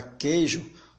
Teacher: Ora, queijo não seria tritongo, você tem aqui um encontro de 3 vogais, mas observe que quando você pronuncia a palavra queijo, o U ele não tem um som pronunciado, logo ele deixa de ser tritongo.